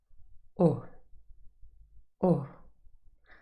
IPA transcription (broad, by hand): ʊ